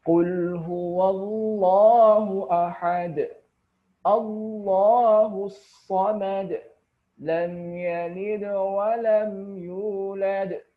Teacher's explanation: Baru yang dipantulkan adalah ketika ada huruf dal di akhir kalimat, karena kita akhir kalimat sehingga bacanya kita sukunkan, maka itu dipantulkan karena huruf dal adalah huruf qalqalah